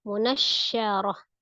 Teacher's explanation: tak marbutohnya menjadi bunyi huruf ha ya, sukun ya, karena dia disukunkan.